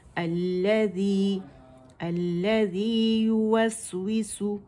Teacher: سین وس، اور آواز چلے گی، اس میں رخاوہ ہے